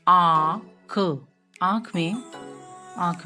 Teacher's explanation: मुंह और नाक दोनों से ध्वनि आपको सुनाई दे रही है। जैसे आँख, और मुंह भी थोड़ा ज्यादा खुलता है इसमें। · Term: चंद्र बिंदु